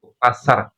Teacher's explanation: R Indonesia takrirnya getarannya itu terlalu banyak. Kalau huruf hijaiyah itu takrirnya di minimal. R-nya itu jangan kebanyakan. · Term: huruf ro